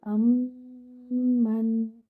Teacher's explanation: Your noon here should be given moderate timing. Do not bounce your noon.